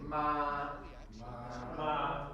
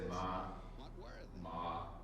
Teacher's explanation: It doesn't matter if it's super high pitched or low. You can say ma, ma. Those are all first tones because it's not changing.